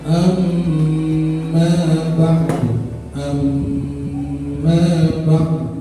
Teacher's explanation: Ada huruf nun bertasydid dan mim bertasydid. Jadi membacanya didengungkan. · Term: gunnah musyaddah